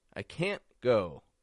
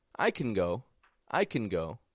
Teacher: when it's positive however we drop the a from the word and we'd link it to the words around it · we make a little pause at the end we have a stop T and we make the N short and quick when it's negative I can't go when it's positive however we drop the a